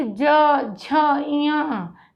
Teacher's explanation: सघोष में सघोष क्यों है? स्वर तंत्रियों में कंपन होता है।